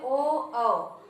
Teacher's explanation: पहले आ का उच्चारण करते हैं तो हमारे कंठ से निकलता है, और उसके बाद जब हम ओ कह देते हैं तो फिर हमारे ओष्ठ का भी इसमें प्रयोग हो जाता है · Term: कंठोष्ठ वर्ण